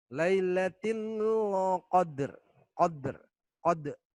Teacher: Di sini ada dal sukun atau dal mati ya, berdetik atau memantul ya. Kita kenal dengan qalqalah ya.